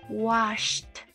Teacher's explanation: la pronunciación de la terminación ed es como una T